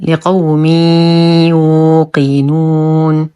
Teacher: تنوين وبعده حرف الياء الحكم ادغام ناقص مع غنه كامله لقوم يوقنون واو ساكنه ما قبلها مضموم فهو مد طبيعي نقف